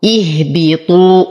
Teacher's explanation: أفخم الطاء فهو أقوى الحروف